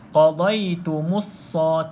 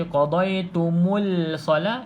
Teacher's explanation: Mana-mana lam yang kosong, tuan-tuan dan puan tidak perlu lafazkan. Maksudnya tak perlu sebut huruf lam yang kosong ni.